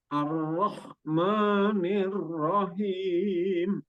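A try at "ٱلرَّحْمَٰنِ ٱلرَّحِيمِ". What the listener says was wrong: Ya, himnya di ujungnya masih kurang ditekan itu apa namanya rongga tenggorokannya. Ar-Rahmanir-Rahim.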